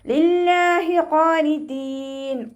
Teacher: ഖാഫ് ഇസ്തിഅലാഇൻ്റെ letter ആയതുകൊണ്ട് നാവിൻ്റെ back മുകളിലേക്ക് പൊക്കിയിട്ട് തഫ്ഹീം ചെയ്യുക. അലിഫ് സഗീറ കൂടെ വന്നു.